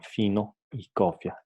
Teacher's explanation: En español general, para su articulación, los incisivos superiores se apoyan en el labio inferior, permitiendo una salida del aire continua, pero con fricción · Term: labiodental